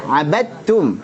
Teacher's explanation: 'Abadtum dalnya idgham ke ta sehingga qalqalahnya tidak dianggap, enggak ada lagi qalqalah. 'Abadtum. Langsung jadi ta 100%.